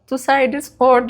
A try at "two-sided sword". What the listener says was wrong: two-sided sword በሲ w silent ነው sword